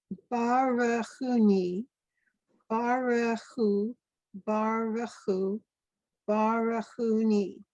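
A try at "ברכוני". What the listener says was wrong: Yep, thank you.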